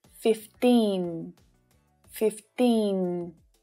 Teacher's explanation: With 15, the tip of your tongue should be touching the ridge behind your top teeth.